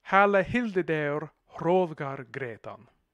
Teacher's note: we have the H's in the stress syllables of the words in the first verse, alliterating with one of the words in the second verse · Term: alliteration